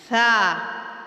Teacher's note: اس کا چھوٹا سا کلیہ یہ ہے کہ سیٹی کو ختم کرنے کے لیے اس حرف کی ادائیگی کرتے ہوئے تھوڑی سی زبان باہر نکالتے ہوئے ثا ادا کریں، سیٹی کی آواز پیدا نہیں ہوگی۔